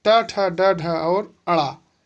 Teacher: ट ठ ड ढ और अड़ा, इसका उच्चारण स्थान है मूर्धा।